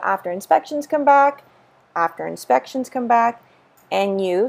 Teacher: so here we drop the D